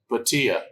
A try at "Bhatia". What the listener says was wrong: Not with the P, it's a B. Batia.